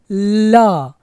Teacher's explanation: जैसे कहते हैं कि ल तो ला जब बोलते हैं तो जो जुबान का अग्र भाग है जो अगला भाग है वह ऊपर सट जाता है और हवा हमारे दाएं और बाए से होकर गुजरती है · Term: पार्श्विक ला